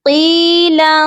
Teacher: قاف کو یا مدہ کے ساتھ لمبا کر کے پڑھیں گے ایک الف کے برابر